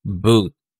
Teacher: yung tunog ay nasa mataas at nasa likod